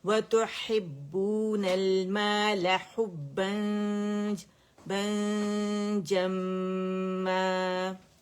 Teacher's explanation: اخفا کرنا ہے, ٹھیک ہے. جیم کی وجہ سے ہم نے نون کو چھپانا ہے